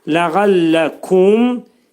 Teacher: mim hərfini izhar edilir, ağız yumulur.